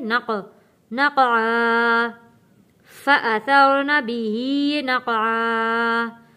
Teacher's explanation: हरूफ़े कलकला आवाज़ वापस पलट कर आएगी यहाँ पे। नक़आ।